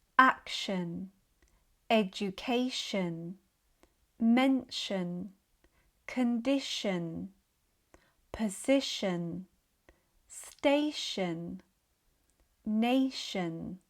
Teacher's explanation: So the T becomes sh, and the vowel becomes the schwa, which is more of an sound. · This happens because in some situations where T is followed by a weak I sound, it becomes sh, such as in words that end in TION, shon. So the T becomes sh, and the vowel becomes the schwa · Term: shun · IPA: /ʃən/